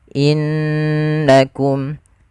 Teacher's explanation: Contoh innakum harusnya ditahan dulu. Innakum sambil dimasukkan ke rongga hidung kita. Kemudian pada lafal innakum zalamtum, di sini sebenarnya ada satu lagi kelewatan kami, yaitu di sini ada hukum tajwid berupa izhar syafawi. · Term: gunnah